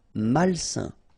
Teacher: A-I-N together, it's a nasal and it's un.